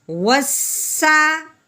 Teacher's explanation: واو سین زبر وس. سین سٹی والا حرف ہے، ہم نے اس کی سٹی کی آواز نکالنی ہے